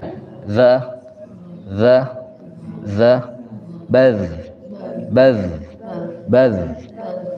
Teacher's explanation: Jadi dia ngekliknya itu ujung punggung lisan ini di gigi seri, di tengah gigi seri.